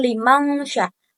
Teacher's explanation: ikhfa hakiki, menyamarkan nun atau tanwin menjadi samar-samar selama 2 sampai 3 harokat